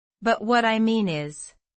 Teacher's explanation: The stress is on mean.